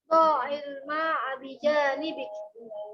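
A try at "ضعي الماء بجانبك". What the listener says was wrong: Dha-nya pendek. Dha'il ma. Yuk.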